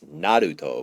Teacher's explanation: they have this kind of RL D sound in Japan that we don't really have here